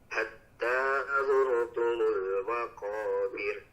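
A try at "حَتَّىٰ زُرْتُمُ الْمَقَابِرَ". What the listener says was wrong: Nah, masih kurang tipis Pak. Nah, mulutnya lebih diseringaikan lagi, seakan-akan senyum. Maqabir, bir. Nah, sudah semakin tipis, tapi lidahnya masih terlalu menekan ke langit-langit. Nah, tinggal lidahnya agak sedikit diringankan, tidak boleh terlalu ditekan. Maqabir, bir. Nah, sudah cukup, tapi masih tebal ya Pak. Masih agak sedikit tebal, tinggal di sedikit lagi.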